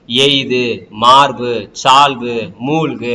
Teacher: இறுதியில் இடம் பெறும்போது தனக்குரிய ஒரு மாத்திரையிலிருந்து என்ன பண்ணும் அரை மாத்திரையை குறைஞ்சு ஒலிக்கும் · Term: குற்றியல் உகரம்